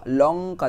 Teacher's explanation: লঙ্কা উচ্চারণের সময় জিভ টাং, ঠিক আছে, দাঁতের মাড়িতে ঠেকে, ঠিক আছে, লঙ্কা দেখো উপরে ঠেকছে, দাঁড়ি।